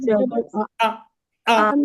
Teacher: হামজা হলকের শুরু থেকে শক্তভাবে আদায় হয়। হামজা হলকের শুরু থেকে শক্তভাবে আদায় হয়।